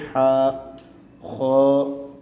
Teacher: ہا کو گلے کے سینٹر سے نکالا جائے گا، حلق کے اندر سے۔